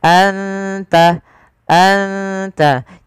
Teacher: Anta ada bacaan ikhfa hakiki, yaitu suara nunnya disamarkan ke huruf ta. Anta, anta, tidak dibaca anta, anta, tapi anta, terdengar samar-samar suara nun kepada huruf ta.